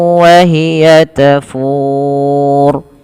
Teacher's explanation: Ro yang dibaca dengan tebal disebabkan karena sebelumnya huruf ro ini dimatikan dan sebelumnya ada huruf dhammah, yang dimana ketika ada huruf ro sebelumnya huruf dhammah maka dia dipanjangkan sepanjang dibaca dengan tebal ya, dibaca dengan tebal. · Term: ro tafkhim